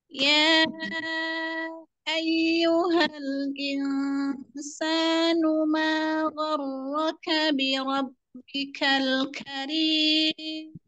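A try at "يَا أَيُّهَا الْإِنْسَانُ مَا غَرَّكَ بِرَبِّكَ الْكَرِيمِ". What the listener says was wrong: Kurang ismam ya. Ya ayyu. Ya ayyuhal. Kemudian ro-nya tebal lagi. Ro. Gharraka bi rabbikal. Ismam, mamonyong, kurang monyong. Domanya kurang monyong. Jadi bentuknya bulat, masih ada celah sedikit.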